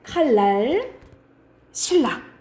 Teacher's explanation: 니은과 리을 만나면 이 니은이 리을로 발음되는 현상이에요. 그래서 다 그런 건 아닌데 대체적으로 거의 다 일어난다라고 생각하면 돼. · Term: 유음화